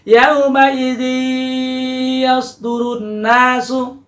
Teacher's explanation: maka akan terjadi bunyi yang sengau ya, bunyi yang nasal, bunyi yang dari khaisum atau hidung · Itu dengung, ada suara dari hidung. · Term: idgham bi gunnah